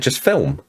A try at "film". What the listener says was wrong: Because it's not film, because you pronounce the L properly. You guys don't pronounce the L properly.